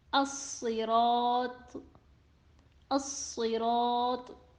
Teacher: Letter Sod in As-Sirat is also heavy, but it has kasra under it that affected it and it won't be read fully heavy